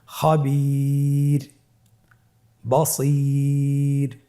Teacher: ওয়াকফের কারণে রটাকে সাকিন দেওয়া হয়েছে এবং তার পূর্বে ইয়া সাকিন রয়েছে, তাহলে সর্ব অবস্থায় আমরা রকে পাতলা করে পড়ব · র হরফটি ওয়াকফের কারণে সাকিন হলে তার ডানে ইয়া সাকিন থাকলে তাহলে রকে পাতলা করে পড়তে হবে।